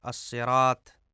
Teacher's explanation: اہدنا الصراط المستقیم، اس میں الصراط میں طا کو، جسے توئے آپ لوگ کہتے ہیں، اس کو تے پڑھا جاتا ہے، الصراط، جو کہ درست نہیں ہے، غلط ہے۔